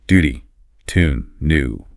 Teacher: Feel that little J sound sneaking in for the British version.